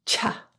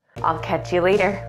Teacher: The CH in catch links to you to sound like cha.